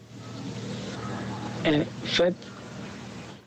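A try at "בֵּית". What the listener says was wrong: Not vet, not the V sound, but the B sound, bet.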